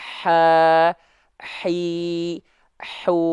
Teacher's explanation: H kecil dia disandingkan dengan sifat rokah mengalir suara Makanya ngalir nafasnya juga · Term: mengalir nafas